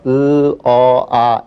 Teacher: 으 어 아 입을 점점 더 벌리는 거죠